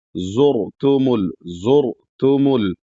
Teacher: यहां पर भी र साकिन है और र साकिन से पहले पेश है तो यानी र को मोटा पढ़ा जाएगा।